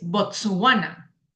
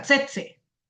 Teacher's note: este sonido era no era ni siquiera por cerca el sonido de la z sino que era la ts